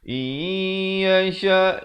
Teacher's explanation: Nun mati bertemu ya masuk beserta dengung dua harakat. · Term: idgham bi gunnah